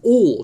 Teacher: Again, all, another one of those words which opens your mouth big and nice and wide because it's a large, round vowel